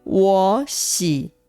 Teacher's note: 我喜原本是2个三声，实际发音的时候会发成2声跟3声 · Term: 3声的变调